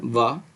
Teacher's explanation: आठवा उच्चारण स्थान यह हो जाएगा दंत प्लस ओस्ट तो इससे बोला जाता है वा केवल एक अकेला वर्ण वा